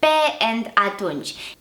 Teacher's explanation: you can clearly hear that the vowels e and ah are full vowels